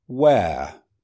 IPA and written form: weə (where)